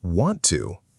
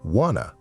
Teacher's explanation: want to almost always turns into wanna when people talk